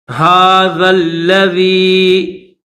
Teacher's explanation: یہ جو ذال ہے اس ذال کو لام کے ساتھ ملا کر پڑھیں گے